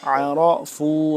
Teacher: را زبر را، عرفوا، را کا موٹا پڑھیں گے